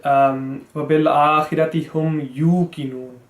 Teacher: Yuqinun is correct because this is huruf madda, you, we're prolonging the you.